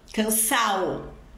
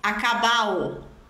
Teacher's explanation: verbos terminados em ar cujo particípio se transforma em ado eles eliminam a letra d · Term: aspiration